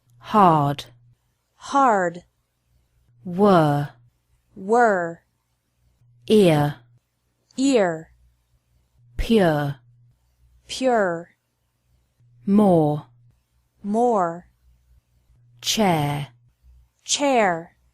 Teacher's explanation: the r is pronounced stronger in American English